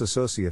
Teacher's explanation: size of the syllable indicates where the accent or stress is in this case the accent is in the second syllable corresponding to so